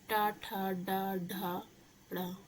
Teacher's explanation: इसमें जो जीभ होती है वो थोड़ा मुड़ती सी है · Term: मूर्धन्य